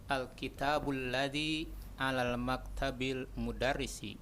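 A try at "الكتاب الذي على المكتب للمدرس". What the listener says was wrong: La, khata. Alal maktabi lil mudarrisi. Itu bukan alif lam Syekh, itu lam double dua-duanya. Alifnya dihapus karena ada lam. Lil. Tidak mungkin alal maktabil mudarrisi, tidak mungkin.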